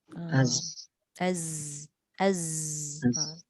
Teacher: Tapi zai dia berdesir tapi angin tak ada, dia suara je. Az. Kena bunyikan suara tu.